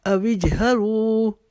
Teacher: اب یہاں پر پھر اپنی آواز کو روکیں گے، جیم کے اوپر قلقلہ کریں گے. اوجہروا، رو کو ایک الف کی جتنا لمبا کریں گے. · رو کو ایک الف کی جتنا لمبا کریں گے. بہ، ہا کے اوپر اپنی آواز کو ختم کریں گے کیونکہ تا کا وقف آ رہا ہے.